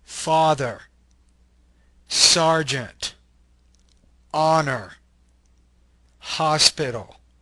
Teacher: this is a low back unrounded LAX vowel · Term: the little a